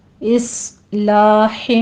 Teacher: اس میں صاد کو پر پڑھیں گے ، سی ٹی کی آواز بھی آنی چاہیے اس میں، اصلاح،